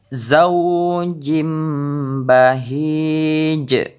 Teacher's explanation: Jadi terdengar suara pantulan ataupun qalqalah di huruf jim ini lebih besar karena kita mewakafkan yaitu di huruf jim ini.